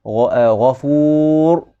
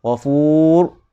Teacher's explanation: takrir maksudnya getaran. Ra, takrir yang sempurna bagi ra ketika sukun. Ghafur, dia 2 kali.